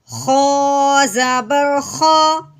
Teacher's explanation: خو کو ہم نے سختی والا حرف رکھنا ہے تھوڑے سے رگڑ کے ساتھ